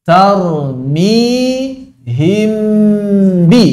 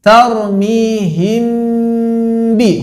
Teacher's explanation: Khusus untuk mim sakinah begini ya, dilihat dari sisinya. Jadi dilihat dari depan kok miripnya mirip idgham karena sekali gerakan, kan? Pas dilihat dari samping ternyata masih kebaca huruf pertamanya mirip izhar. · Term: ikhfa